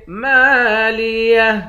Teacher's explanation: میم کے بعد الف ہے، ایک الف کی مقدار کھینچیں گے، آخر میں ہا ہے